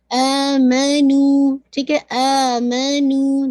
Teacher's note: आमनु, ठीक है, आमनु, दोनों को देखिएगा, आ और नू को 2 काउंट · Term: नेचुरल मद